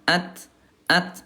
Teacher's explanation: kalau ta dia syiddah dia kuat bukan mantul tapi hams ada udara